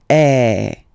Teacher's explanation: And the sound that you will have to produce is e. So it's really open. I mean the sound is really open. And normally your mouth should be opened a little bit more than with the accentu as well.